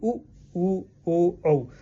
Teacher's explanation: है जी एक तरह का गोलाकार का शेप हमारा बनता है तो उ ऊ ओ औ में हमारे जो है वृत्तमुखी क्या है जी स्वर होते हैं